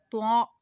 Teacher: जुबान की नोक और ऊपर के दांतों की जड़ से अदा होता है